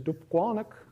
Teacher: you get stress on the first two syllables more stress actually on the second one